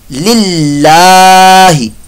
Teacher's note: अल्लाह का नाम से पहले ज़ेर है तो लिहाजा यहाँ पर ज़ेर आने की वजह से ये अल्लाह का नाम जो है ये बारीक पढ़ा जाएगा